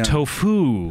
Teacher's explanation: you're stressing the second syllable apparently